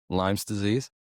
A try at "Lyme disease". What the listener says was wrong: No, there's no limes.